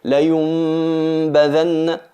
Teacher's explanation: Sería un tercio de M y 2/3 de nasalización, y eliminamos totalmente el sonido de la nun. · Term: ikhfa